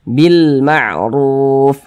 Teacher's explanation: qamariah alif lam qamariyah itu biasa disebut juga dengan izhar qamariyah Kenapa kok disebut izhar qamariah karena huruf lamnya dibaca dengan jelas